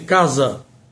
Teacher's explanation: Letra S em sapo e em casa nós temos o fonema Z